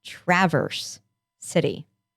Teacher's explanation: an uh schwa for my teacher's sound but for the city they say the a like an actual short a like in cat